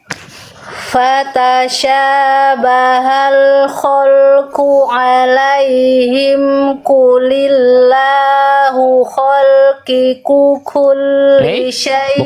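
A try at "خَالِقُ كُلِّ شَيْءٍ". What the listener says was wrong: Bukan khalqiku, khaliqu. Khaliqu. Tadi Bunda baca khalqiku.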